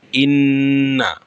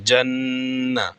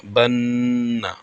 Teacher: নাকের বাসি হইতে গুন্নাহ উচ্চারিত হয়।